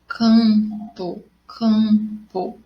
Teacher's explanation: quando eu digo canto e campo, eu não tenho o som do M. É como se eu tivesse o tio em cima do meu A. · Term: som nasal